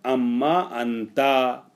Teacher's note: اب ان ما میں جو ان ہے وہ نون ان کا مدغم ہو گیا، ادغام کر دیا گیا اس کا میم سے، ہو گیا اما